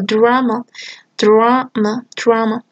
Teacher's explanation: the final allophone is a post alveolar because next to it there is a post alveolar sound